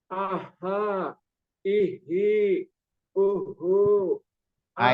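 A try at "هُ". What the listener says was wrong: itu masih masih besar kedengarannya masih besar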